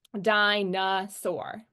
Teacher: our unstressed syllable is going to be that middle one